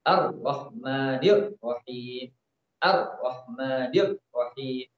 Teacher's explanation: Jadi dia membaca ro dengan menahan suara ro. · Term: syiddah